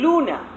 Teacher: La lateral en español es alveolar cuando se presenta delante de una vocal